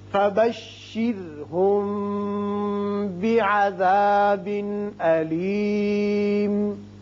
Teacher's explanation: اب یہاں میم ساکن کے بعد با آتا ہے، لہذا یہاں اخفاء شفوی ہوگا. یہاں تنوین کے بعد حمزہ ہے، لہذا یہاں اظہار حلقی کریں گے.